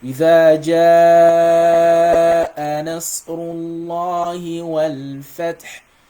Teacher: So the جاء, the minimum duration of this is 4 counts. It's called al-maddu al-wajib al-muttasil.